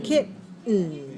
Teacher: We have a glottal stop here. We're not making a vowel sound for the letter E.